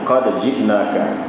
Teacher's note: Dalam qiraat lain adalah dan tu idgham dalam jim, tapi dalam bacaan hafaz tak boleh idgham. Qad ji'naka, ada sedikit qalqalah pada dah.